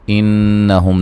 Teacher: انہم نون مشدد پہ غنہ ضروری ہے، میم ساکن کا اظہار ہے